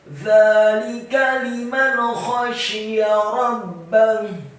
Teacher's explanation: kata rabbah, roknya dibaca tafkhim fathah 1 harokat, ba-nya ditasydidkan fathah 1 harokat, dan ha-nya dibaca sukun dan ditafkhimkan. · khoknya dibaca tafkhim serat fathah 1 harokat, syaknya dibaca tafkhim tebal kasrah 1 harokat, ya-nya dibaca tipis fathah 1 harokat.